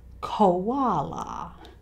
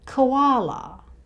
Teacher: We shorten even this O sound to just the schwa sound, k, koala.